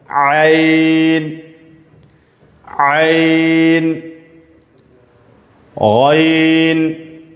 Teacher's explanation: ऐन कहां से अदा होगा? ये भी बीच हलक से अदा होगा। दरमियाने हलक से ऐन ऐन गैन गैन हलक के ऊपरी हिस्से से जिसको आखिरी हलक कहा जाता है। · عین کہاں سے ادا ہوگا؟ یہ بھی بیچ حلق سے ادا ہوگا، درمیانے حلق سے.